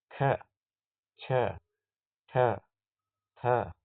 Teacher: ಮಹಾಪ್ರಾಣ ಅಂದರೆ ಹೆಚ್ಚು ಹೆಚ್ಚು ಉಸಿರಿನಿಂದ ಉಚ್ಚರಿಸಲ್ಪಡತಕ್ಕಂತ ಅಕ್ಷರಗಳಿಗೆ ನಾವು ಮಹಾಪ್ರಾಣ ಅಂತ ಕರೀತೇವೆ